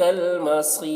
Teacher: صاد کو پر پڑھیں گے، صاد حرف مستعلیہ میں سے ہے، اور را کو باریک پڑھیں گے کیونکہ رائے ساکنہ سے پہلے یا ساکن ہے، را ساکن سے پہلے یا ساکن ہے، تو را کو باریک پڑھیں گے.